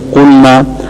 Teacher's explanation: آپ حضرات اہل علم سامعین ہیں تو آپ کو معلوم ہے کہ قلنا جمع متکلم کا صیغہ ہے مذکر مؤنث کا، اور قلنا یہ جمع مؤنث غائب کا صیغہ ہے، تو قلنا میں جو الف تھا اس کو نہ پڑھا اور اس کو گھٹا کر صرف حرکت پڑھ لی